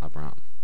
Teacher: we know it's two syllables, and we know we accent that second syllable